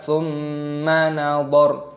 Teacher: Roknya dimatikan ketika tanda waqaf berhenti, jangan dibaca tsumma nadhara.